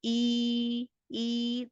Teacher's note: उसको अदा करते हुए जुबान का दरमियानी हिस्सा हल्का सा बुलंद हो जाता है